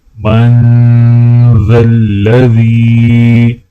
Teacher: ذال کو یا کے ساتھ ملاتے ہوئے ایک الف کے برابر کھینچا جائے گا